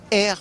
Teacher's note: c'est assez guttural, donc ça vient du fond de la gorge